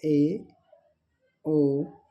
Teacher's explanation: अर्ध संवृत स्वर जिन स्वर के उच्चारण में मुख द्वारा आधा बंद रहता है और आधा संवर्त स्वर कहलाता है।